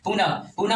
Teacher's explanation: विसर्ग में ये विसर्ग जो चिन्ह लगता है इसमें होकार की ध्वनि सुनाई पड़ता है। पुनः, पुनः में भी होकार का ध्वनि सुनाई पड़ता है